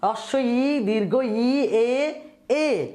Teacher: হ্রস্ব ই, দীর্ঘ ই উচ্চারণ করার সময় ঠোঁট কানের দুই পাশে অর্থাৎ চোয়াল বরাবর যায়, কানের দুই পাশে চোয়ালের দিকে প্রসারিত হয়। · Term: প্রসারিত স্বরধ্বনি